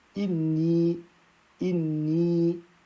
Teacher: ce yé sera un prolongement de deux temps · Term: yé voyelle longue